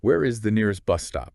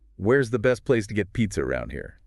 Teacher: notice how the intonation rises at the end of the sentence when you're asking a question